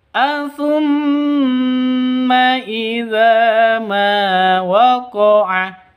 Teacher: Jadi kalau berdiri sendiri gunnah musyaddadah, dengung dua ketukan.